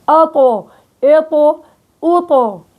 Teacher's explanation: ارتفاع أقصى اللسان ووسط اللسان، الإطباق هو وسط اللسان، إلصاق ظهر اللسان بالحنك الأعلى